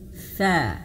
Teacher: huruf sa itu ujung lidah menyentuh ujung gigi seri atas